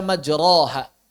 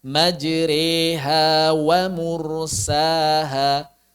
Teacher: suaranya imalah yang sempurna yang besar adalah e seperti saat kita mengucapkan kata tempe